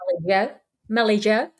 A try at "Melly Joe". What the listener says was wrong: No, you're supposed to pronounce it. You always pronounce the Joe like higher.